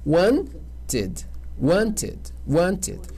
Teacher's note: Quando no presente já terminar, ou na base terminar com o som de D ou o som de T. Aí ele ganha a sílaba e nunca vai ser ed, como a gente pronuncia, é id.